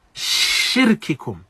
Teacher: we have the flowing and the movement of the sound and the voice, which is from the characteristics of sheen. Yani we have hams and we have rikhwa.